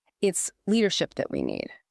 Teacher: I can actually hear how the acoustic emphasis shifts completely onto the word leadership. It feels much weightier.